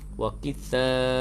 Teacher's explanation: panjang di situ hukum jamak wajib muttasil, bacaan panjang sekadar 4 atau 5 harakat